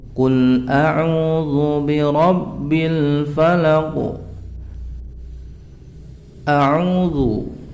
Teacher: A'udzu, bacaan mad tabi'i yang mana waw sukun diikuti dhammah. Panjangnya 2 harokat.